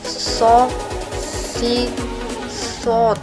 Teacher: Tepat keluarnya sama seperti melantunkan huruf sin, dan sifat serta karakternya pun jauh berbeda dengan huruf sin. Yang membedakan antara sin dan sod adalah suara menebal saat kita melafalkan huruf so.